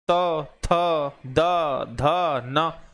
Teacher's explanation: तो ता वर्ग के जो हैं वो सारे व्यंजन दंत हैं, जैसे त, थ, द, ध, न। इनको बोलते समय जीभ सीधे दांतों को ही छूती है।